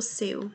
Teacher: temos primeiro a vogal e depois a semivogal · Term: decrescente